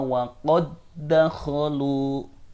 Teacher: Yaitu memasukkan dal yang mati ke dalam huruf setelahnya, yaitu dal hidup. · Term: idgham